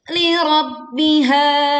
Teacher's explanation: Tekan ba bertasydid, kemudian panjangkan ha 2 harokat